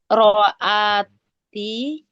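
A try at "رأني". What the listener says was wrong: Bukan ra'ati, non wiqayah.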